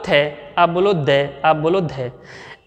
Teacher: इन वर्णों को बोलते समय हमारी जीभ की नोक ऊपर वाले दांतों को स्पर्श करती है, इसीलिए हमने इनको क्या कहा? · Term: दंत्य